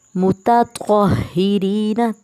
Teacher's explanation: متطہرین، تا باریک اور تھا موٹا